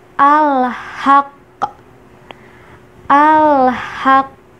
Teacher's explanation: qafnya dibaca double, hanya saja ditahan dulu di awal, baru ke qalqalahnya. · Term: qalqalah kubro